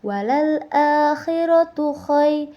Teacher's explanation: Di situ terdapat mad lajin karena huruf ya mati didahului oleh huruf yang berharakat atau berbaris fathah. Dibacanya lembut.